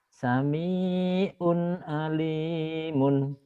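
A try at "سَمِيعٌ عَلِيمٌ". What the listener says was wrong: Sami'un, sami'un. Ainnya belum kena tuh Pak ya. Sami'un, alimun. Sami'un, sami'un, alimun.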